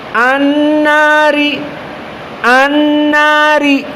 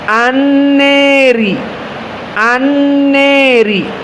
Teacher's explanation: Makna al-imalah al-kubra, dia condong kepada kasroh yang lebih daripada al-imalah as-sugra.